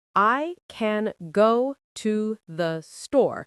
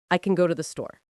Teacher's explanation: The word can becomes kn. The word to becomes t. They are barely there. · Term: schwa